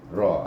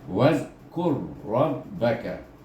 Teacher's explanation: Ingat mahras ra, iaitu ujung lidah kita bergetar, dia bertentangan dengan gusi kita